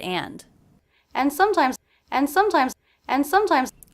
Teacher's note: I definitely dropped the D in that word